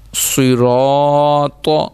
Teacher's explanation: را بھی موٹا, صاد بھی موٹا اور طا بھی موٹا